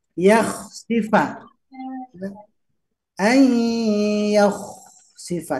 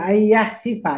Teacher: Yakhsifa, tidak ayah sifa ya, pakai kho. Ya, tenggorokan bagian atas atau lak-lakan ya